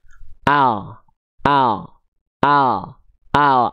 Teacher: ada orang yang melafalkan huruf L cuma nempelin ujung lidah doang ke langit-langit